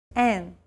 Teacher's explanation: to lower your soft pallet in the back of your tongue unblocking the nasal passage and allowing air to pass through the nasal cavity and out through the nose imagine you're humming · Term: nasal vowels